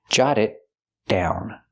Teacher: The T in it is a stop T because it's before a consonant.